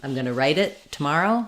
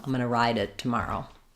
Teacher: right is going to be very short ride is going to be longer